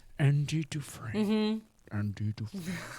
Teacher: No, you got to be airy. You got to be breathy.